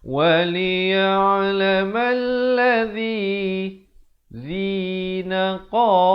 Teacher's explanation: Di sini kena pastikan zi-nya di hujung lidah.